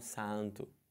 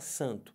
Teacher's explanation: Então você junta esse A com esse N e só fala an.